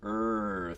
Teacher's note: American English has a really weird r sound. This er thing that you do when you bunch up your tongue. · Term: American r sound